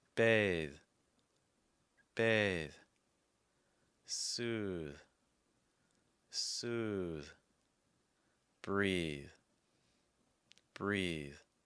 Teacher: you also want to watch out for your voiced th sounds at the ends of words to make sure that your throat is vibrating